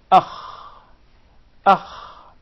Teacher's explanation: So the articulation point is the closest part of the throat.